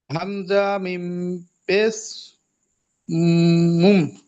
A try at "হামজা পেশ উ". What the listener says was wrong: আচ্ছা, মিমটাকে হামজার সঙ্গে কেন জোড়াচ্ছেন?